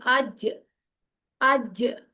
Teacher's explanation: जीम जो है जुबान का जो दरमियानी हिस्सा है वो तालू से मजबूती से जब लगता है तो अज ये जीम भी उन हरूफ में से है जिसको हिलाया जाता है यानी कलकला होता है साउंड इको करती है